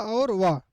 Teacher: इनके बोलने से मुख द्वार बहुत सकरा हो जाता है और हवा स्वर की भांति बीच से निकल जाती है। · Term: अर्ध स्वर